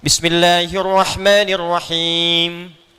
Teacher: Ya itu mesti muncul ketika Anda baca al-Fatihah kan ujungnya mim tuh rata-rata dengan nun. Itu selain diucapkan di bibir ya dari lisan ke bibir mesti ada dengung ke ke hidung sedikit